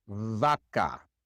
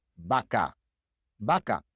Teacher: In Spanish-speaking countries, the great majority of native Spanish speakers pronounce the V just like the B. In Spanish, for most people, there is no difference in sound between the B and the V.